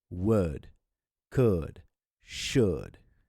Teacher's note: with O-U-L-D, a schwa sound is created.